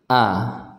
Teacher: Kita keluarkan dari pangkal tenggorokan kita, dari tenggorokan bagian bawah. A, ya, harus kita ucapkan A, jangan pelit-pelit untuk membuka, ya, huruf-huruf yang berharokat fathah. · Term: huruf hamzah